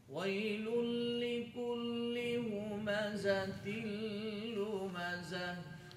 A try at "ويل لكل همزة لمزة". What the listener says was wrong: Ha sound should be heavy and should be visible. Do not hide it. Again, why stretch your lips, like bringing folding and bringing forward. Beside that, you have to stretch like you smiling.